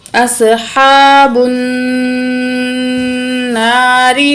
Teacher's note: नून के ऊपर तशदीद है, गुन्ना करेंगे, नाक में आवाज़ ले जाकर ठहरेंगे